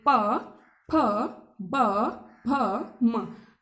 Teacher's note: पा, तो ओष्ठ, जीभ पर, जीभ तो कहीं पर जाकर नहीं लग रही, बस हमारे ओष्ठों पर प्रभाव पड़ रहा है, होठों पर। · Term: ओष्ठों से